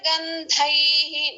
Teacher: దా అనేది ఐత్వము ఉంది, మహాప్రాణము తర్వాత విసర్గ.